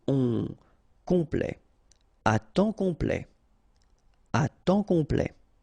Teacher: OM is nasal here, just because you get your P after that, so it's on, complet, à temps complet, à temps complet.